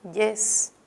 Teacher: en yes ya no encontramos nada porque ya esa Y ya no suena como una I, sino como una consonante, la consonante Y. Así que solo encontramos aquí un diptongo.